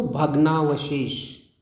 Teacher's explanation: देखिए, भग्न और अवशेष। भग्न में अंतिम जो ध्वनि है अ है, और अवशेष में प्रथम ध्वनि है वो अ है, और दोनों मिलकर के आ बन रहे हैं, आ हो जाते हैं। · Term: दीर्घ संधि